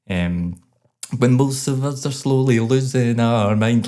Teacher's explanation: it's very kind of punchy and very plosive, and that's what the Scottish accent is